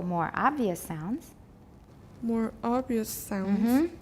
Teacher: more obvious sounds because obvious has contrastive stress